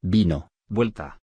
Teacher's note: V. Representa el sonido fricativo labio-dental sonoro.